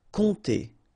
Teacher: OM, really like a nasal here, on, and then this P is not pronounced